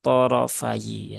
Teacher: sini ee fnya rakatnya fathah kemudian ya-nya kasrah sehingga thofayi ya th dan rnya ya Ini dibaca tebal semua ya dibaca tafhim · Po dan ro-nya ya ini dibaca tebal semua ya. Dibaca tafkhim.